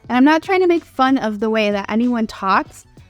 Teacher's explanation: that vocal fry is that low pitched freaky sound at the end of people's voices · the vocal fry that I just did is a characteristic of the accent from Southern California